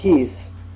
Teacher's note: it's pronounced like our english p when we say peace there's a ha sound after the peace